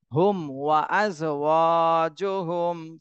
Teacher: ওয়াওতে এক আলিফ টান দিতে হবে, জবরের বামে খালি আলিফ, এটা মদের হরফ হয়েছে, এই জন্য এক আলিফ টান দিতে হবে।